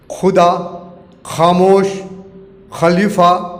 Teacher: ख को इंग्लिश में KH से लिखते हैं, ख से खरगोश, खेल, खिलौना आदि। तो वहीं उर्दू में ख का उच्चारण बिंदी लगने के कारण कंठ से होता है